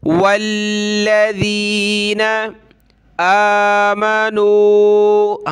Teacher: واو کو لام کے ساتھ ملانا ہے، لام کو سخت کرنا ہے تشدید کی وجہ سے